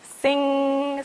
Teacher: when you say sing, it brings the back of your tongue to the roof of your mouth